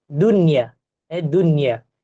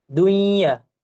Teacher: tetapi tidak dibaca dengan dengung dibaca dengan jelas